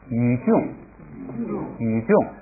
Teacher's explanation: 这个雨我刚才那个音读错了啊，应该是二声